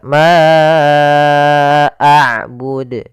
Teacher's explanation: Kita panjangkan untuk huruf ma panjangnya empat harakat. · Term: mad jaiz munfasil